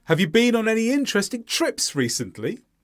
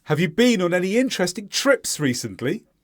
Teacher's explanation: notice again recently goes up at the end because it's in the question